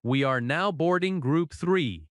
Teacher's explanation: The important words are now, boarding, group, and the number. In natural American speech, we are often reduces to we're. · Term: stress